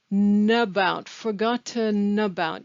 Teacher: the word about attaches to the word forgotten